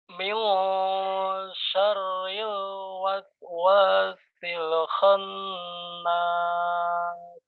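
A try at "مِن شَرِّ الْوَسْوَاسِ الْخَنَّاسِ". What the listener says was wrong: Ya, masih ke hidung ya. Min syarril waswasil khannas. Sil itu jangan sampai mantul, jangan lelenya dihilangkan. Sil khannas.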